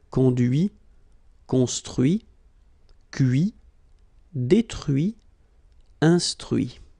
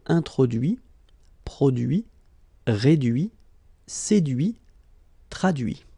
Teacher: you can notice that even if I put this final T, so as usual, I don't pronounce it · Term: final T not pronounced